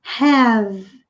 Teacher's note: nós temos have, com esse H aspirado, o H em inglês tende a ser aspirado